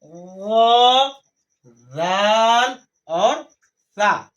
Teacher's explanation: زبان کا سیرا اور اوپر کے دانتوں کے اندرونی کنارے سے جاتے ہیں۔ جو اوپر کا ہمارا دانت ہے اس کا جو اندر طرف کا کنارہ ہے، اندر طرف کا کنارہ، وہاں سے ہمارا زبان کا سیرا لگے گا، یعنی یہ ہمارا زبان کا سیرا ہے۔